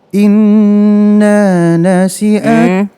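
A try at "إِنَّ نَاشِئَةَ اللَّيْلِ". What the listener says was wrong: Inna, nah yang pertama pendek, nah yang kedua panjang. Inna, ya jadi kalau i harus i. Inna, inna, jangan inna.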